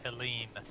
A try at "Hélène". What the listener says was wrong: Actually, the H wouldn't even be pronounced, I believe, so it would be Hélène. Hélène. If it's French.